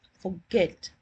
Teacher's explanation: if I pronounce the word as forget, my stress is on get. In that case, what happens is that because there's a vowel over here, it will not let the T go away.